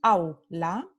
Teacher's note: Entonces, au forman una sílaba aquí y la vocal completa o pura está en primera posición, la semivocal está en segunda posición, entonces es una sílaba, es un diptongo decreciente.